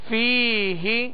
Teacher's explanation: یا مدہ ہے، ایک الف کی مقدار اسے کھینچ کر پڑھیں گے